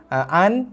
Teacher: An, jaga tak dengung An, nun yang ada baris mati itu nun yang tak dengung. Kena zahirkan bunyi nun mati tu.